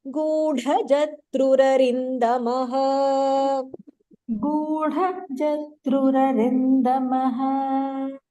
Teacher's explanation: So in this you have Gudha, which is Mahapranaha.